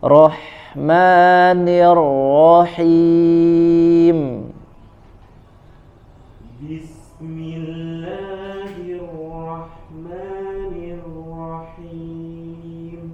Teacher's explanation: Rahma 2 harokat sebentar saja